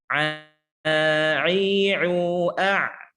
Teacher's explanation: Letak makhraj ain ada di tengah tenggorokan. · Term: huruf ain